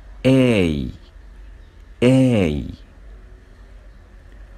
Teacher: Moves from the mid high to high position يعني بيرتفع من الارتفاع المتوسط to high position لأقصى درجة ارتفاع زي ما احنا شايفين كده في الفيديو. · بالنسبة لللبس بتكون not rounded and relaxed. Not rounded يعني ليست مستديرة زي ما احنا شايفين في الفيديو التوضيحي. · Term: A as in take